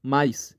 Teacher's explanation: é o a é a única vogal e o i o i é uma semivogal sonora eu não estou falando do a e i o u formais